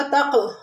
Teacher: تق میں کاف ساکن ہے تو یہاں پر قلقلہ ہوگا